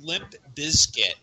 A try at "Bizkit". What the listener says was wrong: the only person I've ever heard say Bizkit that pronounces the Z.